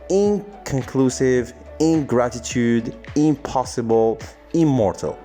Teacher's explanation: this is a typical case of regressive assimilation in which the second sound affects the first sound